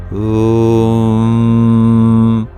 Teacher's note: we bring the place of reverberance in between our lips and our teeth, and we close our lips.